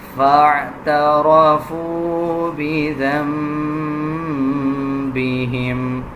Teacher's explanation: را کے اوپر زبر ہے، را کو پر یعنی موٹا پڑھا جائے گا